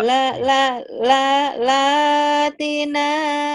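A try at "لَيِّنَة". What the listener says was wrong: Teh. Titiknya di bawah, bukan di atas. Latina, Layina.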